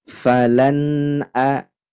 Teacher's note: dengungnya cukup di huruf nunnya saja tidak ke hamzahnya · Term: izhar halqi